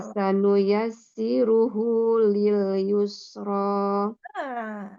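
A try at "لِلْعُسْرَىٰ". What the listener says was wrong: Lil usro pakai ain. Yang tadi atas baru yus, yang sekarang lil usro.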